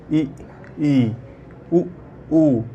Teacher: बोलते समय मुंह लगभग बंद रहता है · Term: सम्मिलित स्वर